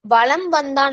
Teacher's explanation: ஆனா வளம் வந்தான் அந்த மகர மெய்யெழுத்து வகர எழுத்து வருவதனால் அதுக்கு அடுத்து வகர எழுத்து வருவதனால் மகர மெய்யானது தனக்குரிய அரை மாத்திரை அளவில இருந்து குறைந்து கால் மாத்திரையாக ஒளிக்கும் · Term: மகர குறுக்கம்